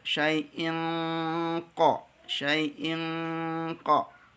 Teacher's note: ada nun sukun atau tanwin ketemu dengan huruf-huruf tebal, maka ikhfanya pun harus mempersiapkan untuk tebal